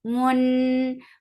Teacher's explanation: Mun, for the ma circle your lips, attach it nun. Nun will get the sifat ghunnah. This ghunnah is at mansub, keep the sound in your nose for a longer time.